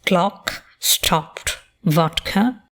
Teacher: you can note the rounded vowel in words of the standard lexical set lot. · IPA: /ɒ/